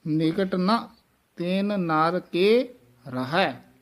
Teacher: ਤਿਨ ਨਰ ਇਕੱਠਾ ਨਹੀਂ ਕਹਿ ਦੇਣਾ ਦੋਵੇਂ ਨਨੇ ਬੋਲਣ ਹਨ ਨਖੇਰ ਕੇ ਬੋਲਣ ਹਨ